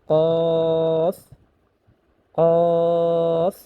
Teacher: কফ আলিফ দুই জবর কন, ত বা কন। এখানে কফটা উচ্চারণ করতে হবে জিহ্বার গোড়া তার বরাবর উপরে তালুর সঙ্গে লাগাইয়া